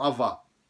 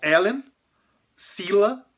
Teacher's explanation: Então, Ellen, sila, de novo, outra palavra de duas sílabas, que é paroxítona, ou seja, acentuada na primeira sílaba da palavra e não na última